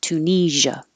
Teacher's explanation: this SIA sounds like a zh, so make sure you have voicing. It's like shh, but with sound.